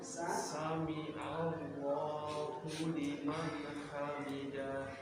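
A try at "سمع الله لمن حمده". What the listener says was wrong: hamidah Ingat tidak panjang, tidak hamidah tapi hamidah. Coba sekali lagi bersama-sama.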